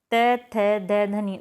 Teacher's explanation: जो त थ द ध्वनियां होती हैं वो दंत ध्वनियां होती है तालू ध्वनियां नहीं होती